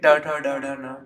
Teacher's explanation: मूर्धा को टच कर रही है पूरी तरीके से जीभ